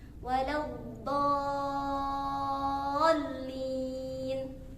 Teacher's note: Karena itu terdapat mat ya, huruf mat yang setelahnya huruf bertasydid. Jadi ketika berpindahnya huruf mat ke huruf yang bertasydid itu berlaku yang namanya nabar, yaitu hentakan atau teriakan keras.